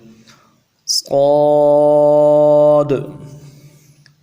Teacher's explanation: صاد، اس حرف کو موٹا کر کے پڑھنا ہے، سیٹی والے حروف ہے، صاد سیٹی والا حرف ہے، سین بھی سیٹی والا حرف ہے، لیکن صاد کی سیٹی جو ہے یہ موٹی نکلے گی، اور صاد کو خود بھی موٹا کریں گے